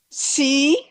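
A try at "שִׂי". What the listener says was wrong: Non, non, non, c'est pas si, hein. Regarde bien où est le point. Regarde où est le point là. Chi, voilà. Chi, voilà.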